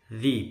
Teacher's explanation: lidahnya nempel di gigi atas. Zi, bukan zi.